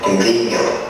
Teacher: But this class gets quite complicated, and sometimes the prefix changes. It changes to an ng sound, like an M, before a B or a V.